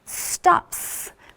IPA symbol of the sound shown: s